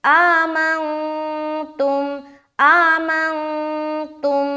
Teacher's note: یہاں پر نون ساکین ہے تو یہاں پر اخفا کریں گے کیونکہ نون ساکین کے بعد حرف تا آ رہا ہے